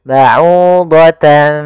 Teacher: bertemu dengan huruf Fa maka ini kita namakan dengan bacaan Ikhfa cara membacanya adalah menyamarkan suara tanwinnya kepada huruf Fa